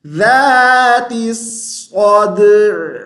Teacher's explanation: جیسے ہی ہم صاد پر زبر پڑھیں گے تو صاد کی آواز موٹی ہو جائے گی